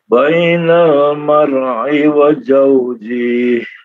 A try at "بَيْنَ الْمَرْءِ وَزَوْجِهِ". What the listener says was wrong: Untuk wazauji itu tidak dipanjangkan. Wazauji gitu saja, diputus langsung.